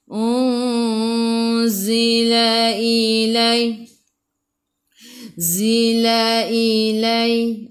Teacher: Nun tak ada sukun, tengok selepasnya ada tak ya atau waw, tak ada. Jadi ikhfa hakiki dengan 2 harakat bawa ke sisi huruf zai.